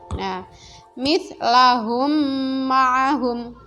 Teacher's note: contoh bacaan inhon Mimi Meme sukun bertemu dengan huruf mim caranya cara bacanya dengan mentasydidkan huruf yang mati ke huruf yang selanjutnya dengan didengungkan · Nah, itu bacaannya seperti ditasydidkan, ya, seolah-olah itu huruf bertasydid, ya, memasukkan mim ke mim yang mati ke mim yang selanjutnya. Cara membacanya dengan memasukkan atau mentasydidkan huruf mim sukun ke huruf mim berikutnya dengan dengung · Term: Idgham Mimi, idgham mimi